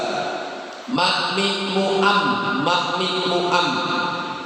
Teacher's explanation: Cara pengucapan huruf mim sama seperti huruf ba. Bibir bawah dan bibir atas disatukan.